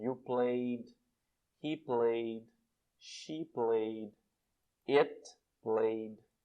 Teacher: Mas o E não é pronunciado aqui, tá? Fica só com o som de D.